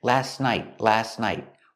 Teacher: And the T in last is silent. You don't hear it.